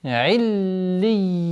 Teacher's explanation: После удвоения я у нас долгота в размере двух огласовок. Вот она. В размере двух огласовок.